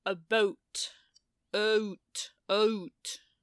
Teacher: So like in the kind of second out of three tiers, if you will, in the vowel space. So we call it Canadian raising because Americans start down in ah, Canadians start up in uh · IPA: [əˈbʌut], [ʌut]